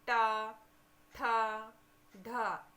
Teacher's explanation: इनको बोलने पर हमारी जीभ फोल्ड होती है और तालु को टच करके आगे की ओर आती है, तो ये हमारी मूर्धन्य ध्वनि कहलाती हैं।